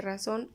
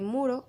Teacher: Si hay vibraciones sucesivas, es decir, que la vibrante es múltiple como la R de razón o de burro. Por otro lado, cuando hay una sola vibración, la vibrante es simple como la R, de muro o poner.